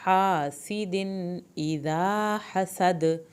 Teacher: ہا سیدن، ہا کو حلق سے پڑھیں، ہا سیدن دال کی جو تنوین ہے وہ ظاہر ہوگی کیونکہ اگلا لفظ الف سے شروع ہو رہا ہے